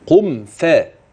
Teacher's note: الميم تبقى واضحه مافيش فيها غنه